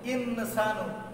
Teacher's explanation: যখন সিন আসছে এখন নুনের জায়গা থেকে নুন পড়া যাবে না, সিনের জায়গায় নিতে হবে। ইনসানু, নুন শোনা যেতে পারবে না।